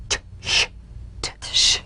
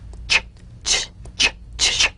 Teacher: Place the tongue firmly on the upper gum ridge for the T, then crash through gently but sharply with the SH.